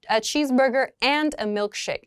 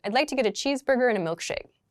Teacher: a cheeseburger and a milkshake in that sentence it's an n a very very short n that connects the two